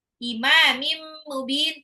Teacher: Imamim mubin tanwin ketemu mim ya. Idgham bighunah ya. Dilebur tapi ditahan dua sampai tiga harakat.